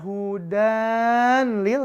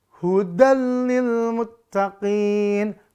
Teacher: Idgham bila gunnah, lebur tanpa dengung. An-nya lebur ke lam tanpa dengung.